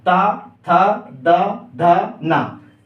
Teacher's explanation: अब इसका जब उपयोग करेंगे अपन, इसको बोलेंगे दंत, अपने दांत किस पे स्पर्श होगा, ता, था, द, ध, ना। मतलब अपनी जीभ जो है वो दांत को जाके स्पर्श करेगी।